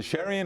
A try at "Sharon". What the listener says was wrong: It's Sharon. Ignore the I, it's Sharon. Sure. Sharon.